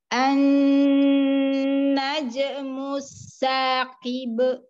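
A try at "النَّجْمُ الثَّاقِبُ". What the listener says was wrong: Najmu saqib. Masih ada hamzah. Naje.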